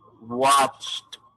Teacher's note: Es decir, este verbo en particular, esa E y esa D no se pronuncian así como se ven. Se pronuncia es con un sonido de T. Watch. Hace ese sonido.